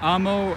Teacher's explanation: ends in a vowel accented on the second last syllable